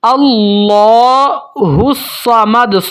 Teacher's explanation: اللہ، یہاں پر بھی اللہ لفظ استعمال ہوا ہے اور پیچھے زبر ہے۔ اللہ کی لام کو موٹا پڑھیں گے اور کھڑی زبر ہے، ایک الف تک لمبا بھی کریں گے۔ اللہ الصمد، سواد موٹے حروف میں سے بھی ہے اور یہ سیٹی والے حروف میں سے بھی ہے، سواد کو موٹا پڑھیں گے اور سیٹی کے ساتھ پڑھیں گے۔